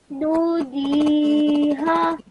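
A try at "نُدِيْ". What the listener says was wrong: No. Change the ya sound to a sakoon sound. What if you had sakoon on top of ya, not fatha? So you'll have nudij.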